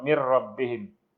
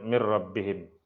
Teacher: Kalau idgham bila gunnah tu mim mati jumpa lam dan ra. Mir rabbihim tak ada dengung, tapi nun tidak disebut. Mir rabbihim kita terus baca ra, mir rabbihim.